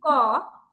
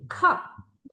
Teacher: আবার আমি যদি বলি ক, আবার যদি বলি খ, ঠিক আছে, তো দেখবো যে খতে কিন্তু বাতাসটা বেশি বের হয়। তো এই যে যে সাউন্ড গুলাতে বেশি বাতাস বের হয়, সেটাকে বলা হচ্ছে অ্যাসপিরেটেড সাউন্ড, ঠিক আছে।